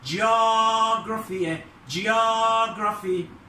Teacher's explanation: noun اسم الستريس على ال O